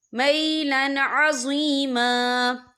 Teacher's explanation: ان تمیلوا میلا عظیما، یہ دیکھیے میلن، یہاں لام کے اوپر تنوین ہے، تنوین کے بعد جو ہے عین آ رہا ہے، اور عین جو ہے حروف ہلکی کا ورڈ ہے، تو ہم یہاں اظہار کریں گے، ہم اسے بنا غننے کے پڑھیں گے۔